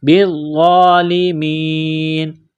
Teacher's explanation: ضا کے اوپر کڑا زبر ہے، ایک الف کے لمٹ میں کھینچنا ہے